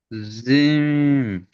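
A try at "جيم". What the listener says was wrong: জিম এরকমই হবে না। জিম। জিম বলে আপনি মুখটা চেপে ধরছেন। চেপে, জি মুখটা ছেড়ে জিম। জি, জিমটি ক আলিফ টান হবে? জি, তিন আলিফ পরিমাণ টান হবে।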